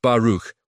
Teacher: with the kh sound like clearing your throat gently